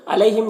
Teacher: यालीन है, इसे नर्म आवाज़ के साथ जल्द पढ़ेंगे